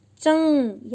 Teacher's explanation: चंग, यानी च के ऊपर बिंदी है, यानी आवाज नाक से आ रही है और इसलिए यहाँ अनुस्वार है